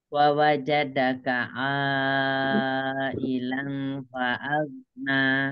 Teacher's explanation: Alamnya tidak ditekan, dia tidak ada tasdid